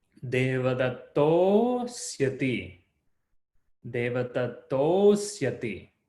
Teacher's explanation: that first akara and second akara, they all become one O